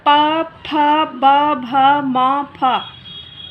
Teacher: इसका उच्चारण स्थान आपका ओष्ठ यानी होठ है।